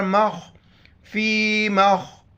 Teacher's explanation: خوا موٹے الفاظ میں سے موٹا کر کے پڑھیں گے